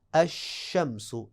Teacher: اس کے بعد لام کی وہ صورت کے جس میں لام ادغام کر کے پڑھا جاتا ہے، وہ ہے بالکل سادہ، جب بھی لام معرفہ کے بعد ان 14 حروف کے علاوہ جو باقی 14 حروف ہیں اگر وہ آ جائیں گے تو ادغام ہوگا، اور ادغام کا مطلب یہ ہے کہ لام جو ہے لام معرفہ وہ اگلے حرف کی جنس میں تبدیل ہوگی اور پھر اس میں مدغم کر دیا جائے گا، تو کیا نتیجتاً لام کو نہیں پڑھا جائے گا اور وہ جو اگلا حرف ہے اس پہ شد لگا دی جائے گی۔